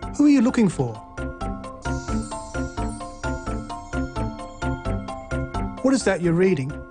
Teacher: so a falling tone is used for what and how questions